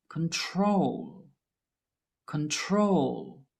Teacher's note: The verb control is different because the stress is on the last syllable that has an L.